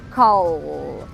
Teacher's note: Vibrou a garganta, não vibrou? Então quer dizer que esse último som é um som voiced.